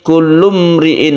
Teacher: ada mim mati bertemu dengan ro izhar syafawi